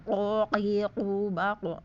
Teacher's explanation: Jadi kalau langit-langitnya keras itu kaf. Tapi kalau pangkal lidah bertemu dengan langit-langit lunak berarti qaf.